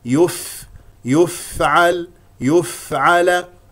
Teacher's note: ان يفعل ي اذا انتقلت الى الياء ضم الشفتين لانها مضمومه والفاء اخرج معها هواء لانها مهموسه وحرف الفاء مخرجه ضعيف